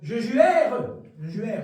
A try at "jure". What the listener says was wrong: Non, t'as pas besoin de faire le R. Tu fais jure.